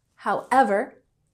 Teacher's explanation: with emphasis on the second syllable